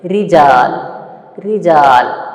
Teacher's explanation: را کو جب زیر ہو، را کو جب زیر ہو تو کیا کر کے پڑھنا ہے؟ ترقیق کر کے پڑھنا ہے.